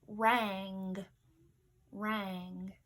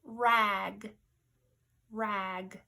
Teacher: you hear the a and then the N and the G kind of weld together that melt together to form one sound